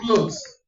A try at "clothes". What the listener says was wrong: What happened to the T?